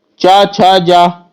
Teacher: तो जो चा छा जा वाला जो वर्ग है ये तालु के अंतर्गत आता है